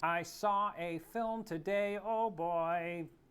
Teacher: so our brains feel compelled to stick an r in between the two words so that the transition from one to the other feels a bit more fluid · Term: intrusive R